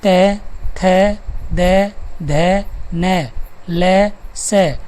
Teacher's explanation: इनका उच्चारण स्थान है दांत और ध्वनि का नाम है दंत्य।